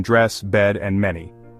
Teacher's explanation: Your tongue is mid- height and forward lips neutral. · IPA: /e/